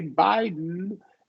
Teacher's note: nice and calmly articulate, use your voice for that D